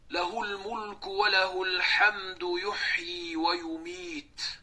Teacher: to'xtalayotgan paytimizda ikki harakat cho'zib to'xtalindi. Chunki mad oris ikki to olti harakat bemalol cho'zib to'xtalsa bo'ladi.